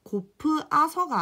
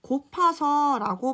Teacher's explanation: 고프 아서가 아니라 우리는 곱아서라고 발음을 하죠. 즉 여기 어간 끝에 으가 모음으로 시작하는 어미 아서를 만나서 얘가 탈락된 거죠. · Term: 모음 탈락